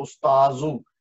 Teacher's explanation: استاد ہم اردو میں کہتے ہیں لیکن عربی میں صرف اتنا فرق ہے کہ دال کے اوپر زال لگا، وہ دال کی جگہ زال لگتا ہے